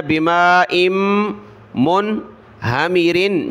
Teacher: بما حمزہ کو آگے میم کے ساتھ ملا ہے. بماء منہمرن جب رکے تو منہمر.